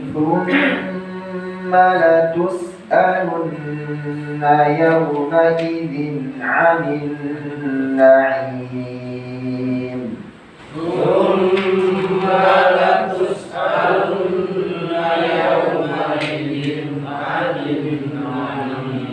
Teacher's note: Nun tasydid kedua ditahan, nun tasydid lagi ditahan, ya. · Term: gunnah lil musyaddadah